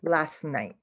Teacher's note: Well, maybe you can't hear the T, but you can feel it in your mouth. Last, and you're starting to say the T, you can feel that T, but then you don't make the sound and you just say night.